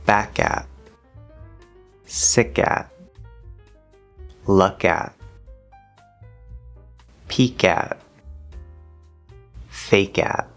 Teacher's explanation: And also, like the P sound, if there's a connection between two words, this will reactivate the glottal stop, and we will have an actual K sound, a soft K sound.